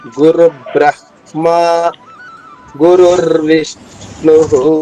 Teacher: మనం ఆఘాతాలు లెక్క తీసుకుంటే ఋ పైన ఆఘాత వస్తుంది